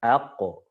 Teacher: Qalqalah huruf qaf dan to itu harus selalu tebal